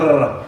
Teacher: When you do Ar, what are you using? Using the top part of the tongue. You're not using the bottom.